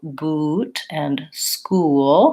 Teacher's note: woo is a tense and round sound my tongue is tense my lips are very pursed